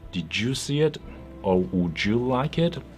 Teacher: D plus y becomes CH as in orange or George